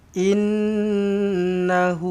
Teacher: nun sabdu dengungkan dengan dua harakat wajibul ghunnah. Innahu hu ada wau kecil selepas huruf ha baris depan ni maksila qasirah dua harakat eh.